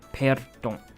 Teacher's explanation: A tongue R, not a throat R.